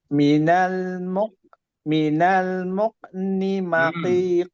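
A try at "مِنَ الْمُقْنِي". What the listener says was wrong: kol-kolahnya hilang tuh.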